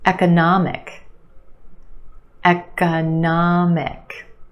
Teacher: We've got four syllables. The third syllable is your stressed syllable. · The third syllable is your stressed syllable, na, the ah sound, economic. And we have a schwa in the second syllable, ka, eka, eka, economic.